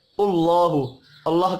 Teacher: اللہ کا نام پیش کی وجہ سے پر پڑھا جائے گا